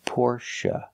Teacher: the last syllable is pronounced uh like Cup in up not a like say and pay but uh like cup and up Porche it's a relaxed sound